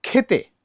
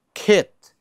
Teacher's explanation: খটা আমি যেরকম করে বলবো খাবার, কিন্তু ক্ষীয়টাকে বলবো আরেকটু স্ট্রেস দিয়ে, আরেকটু জোর দিয়ে। হ্যাঁ, যেমন খেতে, ক্ষেত, একটা হচ্ছে খেতে যাব, একটা হচ্ছে আমি খ্যাতে যাব।